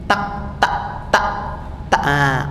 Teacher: Huruf kaf itu kalau sukun biasanya orang membaca yang keliru, ya. Jadinya takfuru harusnya dihembuskan jadi tak.